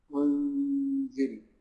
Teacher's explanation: عند الإخفاء النون ما بتظهرش، ما بتظهرش، إنما يظهر الصفة بتاعتها اللي هي الغنة بتاعتها